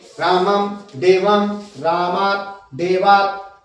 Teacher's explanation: अंतिम जो है उसकी ध्वनि जल्दी से निकलनी चाहिए क्योंकि वो हलंत है। हलंत का मतलब जिसमें कम से कम बोलने का समय लगे।